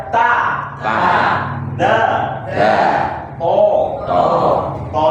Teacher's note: ujung lidahnya nempel ke pangkal gigi atas atau belakang gigi kelinci